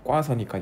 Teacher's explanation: 어간의 오가 반모음 오로 바뀌었네요